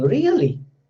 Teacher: Then you can find like there is a falling rising. Really, that type of pitch is there.